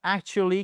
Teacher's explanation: Le stress, c'est simplement l'accentuation. OK ? et elle se fait sur cette première syllabe